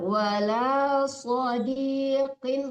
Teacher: Shadnya tebal, qofnya tebal.